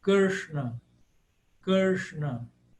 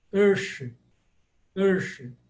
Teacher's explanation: Elas são letras retroflexas, ou seja, com a língua voltada. Você tem que voltar a língua, apontar a língua para o céu da boca.